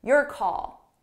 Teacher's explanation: Call is the one that's stressed.